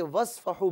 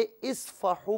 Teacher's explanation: ملانے کی صورت میں واو کو صاد کے ساتھ ملایا جائے گا، درمیان سے حمزہ کو حذف کر دیا جائے گا، یعنی حمزہ کو نہیں پڑھا جائے گا۔